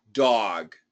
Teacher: dog is very Boston. This is actually an AW, dog.